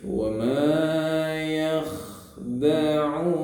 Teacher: Wa ma-nya panjang matobi karena ada alif. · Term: mad tabi'i